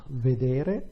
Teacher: Vedere, the stress is on the penultimate syllable, which is what you would expect. And with vendere instead, the stress is shifted one syllable to the left.